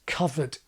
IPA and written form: kʌvə(r)t (covert)